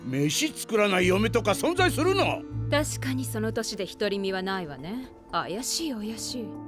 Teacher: Both actors speak in a very proper, breathy, almost unobtrusive way